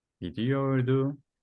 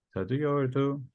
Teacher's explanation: When we have a vowel after these particular verbs, when we have a tense that starts with a vowel, we have to change the T at the end and make it D. So the verb git is going to be gidiyordu.